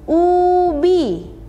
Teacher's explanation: Contoh kata ini. Vokal U, bunyi vokal ini dihasilkan dengan membulatkan bibir dan mengangkat bagian belakang lidah